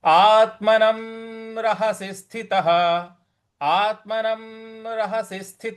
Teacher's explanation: आत्मनम, जो आ के बाद में आधा त है, वहां पे बल लगाना है, आघात देना है। और न के ऊपर जो अनुस्वार है, उस पे म का उच्चारण निकलेगा। और रहसी स्थि, स्थि, यहां पे हमें आघात देना है, रहस्य स्थि।